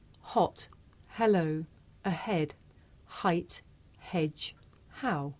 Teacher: this is a voiceless consonant it makes very little sound because it's really just your breath